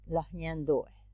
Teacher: a voiceless palatal fricative articulating the sound in the same place that in which the nasal is articulated